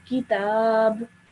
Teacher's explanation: because you're stopping, so you turn this fatha into a sukoon